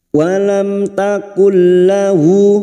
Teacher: mim sukun bertemu ta Idhar syafawi mim sukun dibaca jelas tanpa mendengung